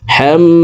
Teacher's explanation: তশদীদ ওয়ালা মিমের সাথে 3 সেকেন্ড পরিমাণ গুন্নাহ করে পড়ব